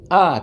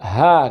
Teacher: Hamzah dan ha keluarnya dari pangkal kerongkongan. Ini pangkal kerongkongan.